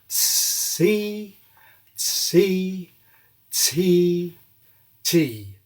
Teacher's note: inside English T is a little S sound, S. We can explore this by exaggerating a little bit. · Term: affrication